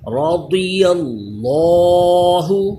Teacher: اسی طرح ضاد کو پر کیجئے اور لفظ اللہ کا لام بھی پر ہوگا، رضی اللہ، ضاد بھی پر، حروف مستعلیہ ہے، لفظ اللہ کا لام بھی پر کہ اس سے پہلے زبر آ گیا